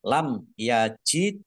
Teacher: tasdidnya mim sukun bertemu dengan huruf ya bacaan syafawi dibaca jelas Dal sukun bacaan qolqalah dibaca memantul ditampakkan pantulannya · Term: kolkolah